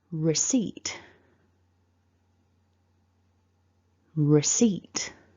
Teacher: don't say the p it's silent in this word · We don't say the P. We don't say receipt. So as tempting as it might be, don't say the P.